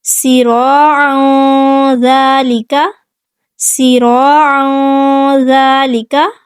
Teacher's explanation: عین کو حلق کے درمیان سے ادا کریں گے، سراعا سین پہ سیٹی واضح کریں گے، را کو پورا اور موٹا پڑھیں گے، ذال کو نرمی سے ادا کریں گے، سراعا ذالک صعیدا زلقا، صعیدا زلقا۔